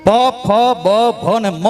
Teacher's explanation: આ બોલવાથી બે હોઠ ભેગા થાય પ બોલો એટલે બે હોઠ ભેગા થાય ફ બોલો બે હોઠ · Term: ઓષ્ઠવ્ય